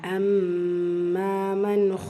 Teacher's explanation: மீம் முஷத்ததா குன்னா செஞ்சு ஓதணும் கூடவே அலிஃப் மத்தா இருக்கு இரண்டு ஹரக்கத் அளவு நீட்டம் கொடுத்து ஓதணும்